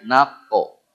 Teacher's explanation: Huruf qaf bunyi dia naqo ya. Pantulannya ke arah tebal to. Naqo ya, tempatnya qaf di pangkal lidah ya.